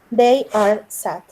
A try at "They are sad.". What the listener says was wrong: Okay, that's correct. Thanks.